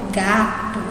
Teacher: a gente fala o gá com mais força · Eu passo mais tempo no gá do que no to. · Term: sílaba tônica